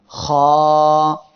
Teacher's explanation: এ অক্ষরের মাখরাজ হলো কণ্ঠনালীর শেষ ভাগ হইতে খ উচ্চারিত হয়। কণ্ঠনালীর এই শেষ স্থান থেকে এই অক্ষরটি উচ্চারিত হবে।